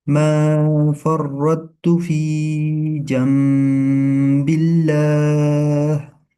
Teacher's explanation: We are doing iqlab here because when there is a noon silent and after noon silent when there comes ba we read it. We change noon silent and tanween into meme and read it as ghunna.